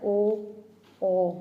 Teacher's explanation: ਦੋਵੇਂ ਹੋਠ ਲਚਕਦਾਰ ਹੋਣ ਕਰਕੇ ਗੋਲ ਜਾਂ ਅਰਧ ਗੋਲ ਹੋ ਜਾਂਦੇ ਨੇ